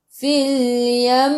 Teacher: Kat sini kalau ada sabdu di atas mim kena dengung bila berhenti. Okay, kena dengung dua harakat bila berhenti sebab ada sabdu